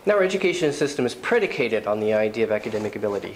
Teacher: he's putting special emphasis on predicated